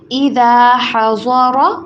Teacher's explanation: ضاد کو موٹا کر کے پڑھیں گے اور را کو بھی